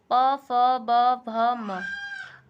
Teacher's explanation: म वर्ग, पा वर्ग, पा वर्ग का होता है ओष्ठ्य होता है, उच्चारण क्या होता है? उच्चारण स्थान ओष्ठ्य होता है, इसलिए इन्हें ओष्ठ्य व्यंजन कहते हैं